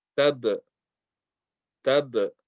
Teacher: We're not saying ta and then ba with a fatha. We're not saying taba. We're putting just a small echo sound. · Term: qalqala